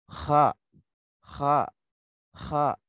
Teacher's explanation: Kalau kha itu karena ada angin yang keluar banyak, jadi harus seperti orang yang ngorok ya. Kha, kha, kha gitu, bergetar tenggorokannya.